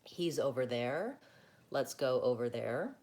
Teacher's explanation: over there, I don't really link those words when I'm talking.